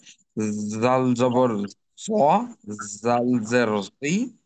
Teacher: ছা আর জালের ক্ষেত্রে জিহবাটা দাঁত থেকে একটু সামনে এগিয়ে এসে উচ্চারণটা করতে হবে